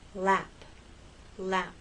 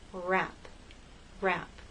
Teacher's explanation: the tip of your tongue for L and lap touches that bump and the sides are down with R in wrap the tip of your tongue goes up towards that bump but it doesn't touch the rest of your tongue is sort of bunched up and